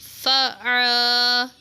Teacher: عین کے ساتھ الف ہے، اس کو تھوڑا کھینچ کے پڑھیں گے